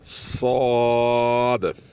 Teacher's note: साद मोटा और सख्त होना चाहिए, इसमें भी सख्ती इतनी हो कि थोड़ी सीटी जैसी आवाज़ निकले तो बेहतर है।